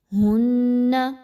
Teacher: ہن، نون مشدد کا غنہ کیجیے، ہا اور نون کو آپس میں مضبوطی کے ساتھ ملائیے، آواز کو ناک میں روک کے رکھیے